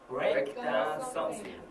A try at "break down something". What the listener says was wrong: something 아닙니다. 이거, 아, 이거 또 기억하시죠? 혀 꽉 깨물면서 갑니다. break down something. something 할 때 혀 꽉 깨물면서 이렇게 가셔야 돼요. break down something.